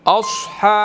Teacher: अस स्वाद है, यहाँ पर हमने इसको मोटा अदा करना है